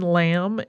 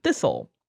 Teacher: we also stopped saying the b in lamb and the T in thistle